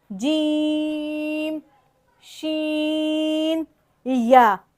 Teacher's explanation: اس میں ہم نے کیا کرنا ہے، زبان کے بیچ وسط لسان جسے کہتے ہیں عربی میں، ایک تو زبان کی نوک ہے، پھر زبان کا بیچ والا حصہ ہے اور ایک آخر والا حصہ ہے. تو وسط لسان زبان کے بیچ والے حصے کو اس کے مقابل تالو سے لگائیں گے، اس کے مقابل اوپر کے سخت تالو سے لگائیں گے.